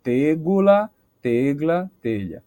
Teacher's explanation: a vogal átona do meio termina sendo modificada de alguma forma ou se perdendo e a palavra termina perdendo uma sílaba